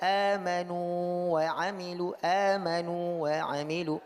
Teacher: waw sukun ini tidak masuk ke dalam huruf waw di depannya. Walaupun tadi dikatakan kalau ada huruf sukun bertemu dengan huruf yang sama jadi idgham, tapi pada huruf mad tidak terjadi idgham.